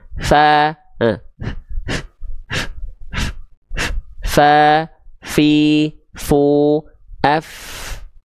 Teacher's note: ketika huruf Fa tepat dilafalkan maka dia akan mengalirkan nafas karena rufa itu punya sifat yang namanya adalah hams